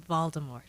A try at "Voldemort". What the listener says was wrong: Apparently, it's incorrect pronunciation. It's Voldemort. There's no T. It has a French but it's silent because it's French based.